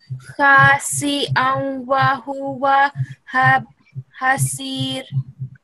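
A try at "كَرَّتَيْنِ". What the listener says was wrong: Yeah, the mistake that you made when you read was karratayni. There is sukoon on karra. It will be karratayni.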